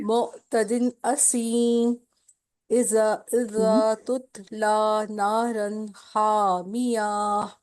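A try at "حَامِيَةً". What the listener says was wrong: نہ حامیہ کیسے؟ دیکھیں حامیہ آخری والی گول تا کو ہا میں بدلیں گے، لمبا نہیں کریں گے اس کو.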